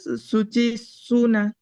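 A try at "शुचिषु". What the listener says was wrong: షు షకారం ముద్దని షకారం. ఏదైతే వారి షూలో ఉందో అదే షకారం, శుచి షు. సో ఇందాక శుచి అని అంటున్నారు, అక్కడ దీర్ఘం లేదు, శుచి. ఓకే, శుచి దీర్ఘం లేదు.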